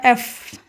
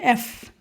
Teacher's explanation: উপরের দাঁত নিচে ঠোঁটের সাথে লাগবে এবং হালকা একটু বাতাস বের হবে